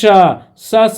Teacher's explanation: मुंह के माध्यम से हवा का घर्षण ज्यादा होता और बाहर निकलता है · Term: उष्म व्यंजन